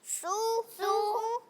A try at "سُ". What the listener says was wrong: لیکن یہ تو تھوڑا سا بڑھ گیا، کسی ایک کا بڑھ گیا ہے.